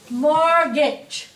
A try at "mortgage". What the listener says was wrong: Không có đọc chữ này, không có đọc chữ T nhá.